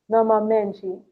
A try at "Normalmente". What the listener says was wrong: Normalmente. Remember that we don't pronounce the L. Normalmente.